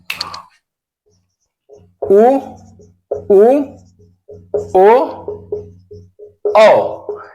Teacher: इसमें होठ की जो आकृति होगी वो क्या होगी? गोलाकार होगी।